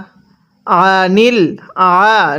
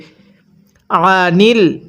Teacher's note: আইনটা পড়ার সময় গলার মধ্যে চাপ দিয়ে পড়ব। যদি আইনটা পড়ার সময় গলার মধ্যে চাপ না দিয়ে পড়ি তাহলে আইনটা হামজা উচ্চারণ হয়ে যাবে।